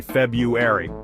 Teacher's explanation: who thought adding two RS in there was a good idea most people just skip right over that first R · Most people just skip right over that first R and say February.